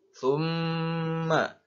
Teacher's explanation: Maka cara membacanya dengan cara ditekan. Summa ditekan dan ditahan agar jelas kalau pada kata itu terdapat tanda baca tasydid.